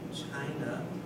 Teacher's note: we need to stress the first syllable